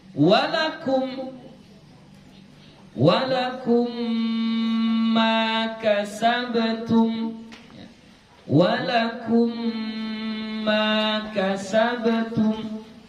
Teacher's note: Mana di situ mim mati berjumpa dengan mim. Ya, mim mati berjumpa dengan mim. Jadi dibaca ghunnah. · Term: idgham mutamathil